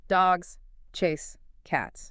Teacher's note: That's three beats, three strong words.